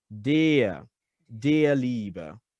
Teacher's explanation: So instead of der, close that vowel just a little bit.